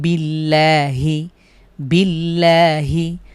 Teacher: আল্লাহ শব্দের পূর্বে জের হয়েছে পাতলা করে আমরা পড়ছি